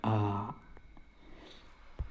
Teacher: पहला है विवृत स्वर, मुंह पूरा खुला होता है।